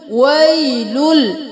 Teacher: ویلن لکل نہیں کریں گے. ویلل لام کو جب لام کے ساتھ ملا دیا تو لام کی آواز آئے گی، لن کی نہیں آئے گی کیونکہ مل گیا. ویلل ایک بار لام کے ساتھ ملا دیا کیونکہ تشدید ہے.